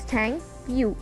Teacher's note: Thank is stronger and you is weaker. So we can say that thank is louder than you.